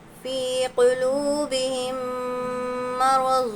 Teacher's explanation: فی قلوبہم مرض، دیکھیں فا یا زیر، فی یا ساکن سے پہلے زیر یا مدہ ہے، یا مدہ کو ایک الف کے برابر کھینچ کر پڑھنا ہے